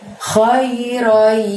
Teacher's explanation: Roinya masukkan ke huruf y di sana atau huruf ya dan ditahan selama 2 harokat. Khairoy, baru kemudian bunyi yaroh.